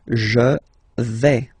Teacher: when you combine this A-I, you get the sound A, really open, okay? Je vais, d'accord?